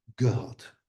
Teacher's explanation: Again, velar fricative becomes a velar plosive. So in Dutch, in fact, you should say gehad, gehad.